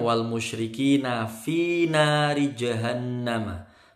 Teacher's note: Kalau ayat ke-6 wal musyrikina fi nari jahannama. Fi panjang 2 ketukan.